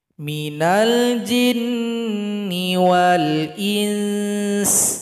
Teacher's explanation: Cara berhenti di sini, sin disukunkan. Sebelumnya nun didengungkan dulu 2 harokat karena di sini ada ikhfa.